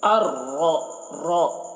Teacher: راء مشددہ کے اوپر زبر ہے تو راء کو پر پڑھیں گے